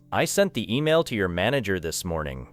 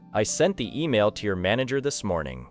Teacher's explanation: The most important words are usually sent, email, manager, and morning. The smaller words, I, the, to, your, and, this, may be spoken more quickly and softly. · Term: weak words